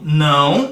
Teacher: acho que alguns conseguem perceber a utilização do nariz para pronunciar · não desceu do a para um fonema u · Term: decrescente nasal